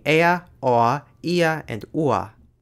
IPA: eɐ̯ oɐ̯ iɐ̯ uɐ̯